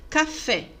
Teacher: A sílaba tônica de café é fé, em vermelhinho ali.